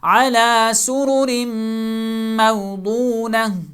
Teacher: موضونۃ، اینڈ پہ گول تا ہے جس کے نیچے دو زیریں ہیں، لیکن جہاں اس کو سٹاپ کر کے پڑھیں گے تو موضونۃ نہیں پڑھا جائے گا بلکہ موضونہ، تا کو ہا میں تبدیل کر دیا جائے گا۔